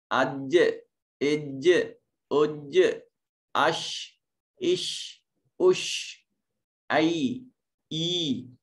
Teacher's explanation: زبان چوڑی ہوتی ہے اور اس کے ایک حصے پر تھوڑا سا پریشر دباؤ دے کر زبان کے جو کنارے ہیں وہ اوپر والے تالو کے ساتھ ملتے ہیں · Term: جیم شین اور یا